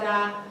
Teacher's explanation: your tongue goes directly on the alveolar ridge.